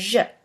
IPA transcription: ʒ